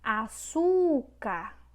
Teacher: Já também temos a sílaba tônica, que é o su. Então, é paroxítona.